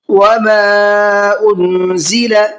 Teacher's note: یہاں پر الف مدہ کے بعد میں حمزہ آ رہا ہے اور وہ بھی دوسرے ورڈ کے اندر آ رہا ہے، تو یہ مد منفصل کا قاعدہ ہے، اس کو 1 سے 3 الف کی برابر کھینچ کر کے پڑھنا ہے